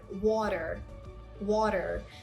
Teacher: So this is flat T sound. Now, when the letter T is between 2 vowels, so you're going to pronounce your ta sound as a very soft da sound